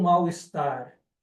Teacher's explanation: Na verdade, eu pronuncio como U. Eu não pronuncio como L.